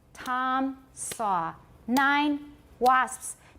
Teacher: Because we have no unstressed syllables to fill in the gaps between the stressed syllables, we pause. · All 4 words are stressed.